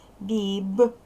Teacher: дзвінкий приголосний в кінці слова і складу вимовляй дзвінко